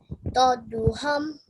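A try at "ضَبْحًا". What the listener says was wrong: zabhan. Remember, you're joining dod with ba. Zab, zab, han, zabhan.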